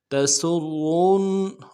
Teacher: سین کی سیدھی باریک ہوگی، سین کو را کے سامنے لانا ہے، را کے اوپر تشدید زور دیں گے. تسرون، اور را کو موٹا کرنا ہے، آگے نون کے سامنے لانا ہے، نون کے اوپر تشدید زور دیں گے.